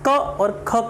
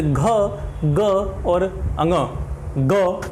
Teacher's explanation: आप ग या घ या अंग इनका उच्चारण करेंगे तो आप ये देखेंगे आपके गले में कंपन उत्पन्न हो रहा है। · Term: सघोष ध्वनियाँ